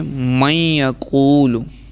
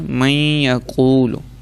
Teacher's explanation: آپ گننا بھی کریں گے، یعنی آپ کے ناک میں بھی آواز جانی چاہیے، ٹھیک ہے نا، اور اس کے ساتھ ساتھ ادغام بھی کریں گے۔